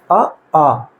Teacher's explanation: अ आ कहां से हो रहा है कंठ से सीधे हो रहा है